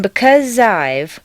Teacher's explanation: the z sound at the end of because and the I sound of I blend together smoothly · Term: liaison